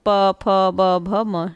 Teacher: पूरा प वर्ग, दोनों होठों को मिलते हैं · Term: ओष्ठ ध्वनियाँ